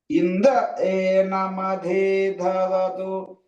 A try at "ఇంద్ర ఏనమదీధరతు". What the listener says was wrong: మధీ ఒత్తులేదండి. ఇంద్ర ఏనమదీధరతు. మదీధరతు అన్ని స్వరితమే. ఇంద్ర ఏనమదీధరతు.